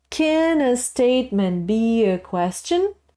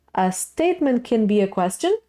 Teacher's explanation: a question statement has a different intonation it goes constantly and then rises at the end suddenly